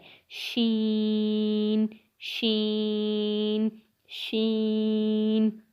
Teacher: زبان کے درمیان اور اوپر کے تالو کے درمیان سے ادا ہوتا ہے